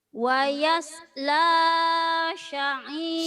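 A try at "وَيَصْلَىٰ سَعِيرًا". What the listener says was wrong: sinnya kecil. Sa'iro, sin kecil. Wayas Wayasla sa'ira.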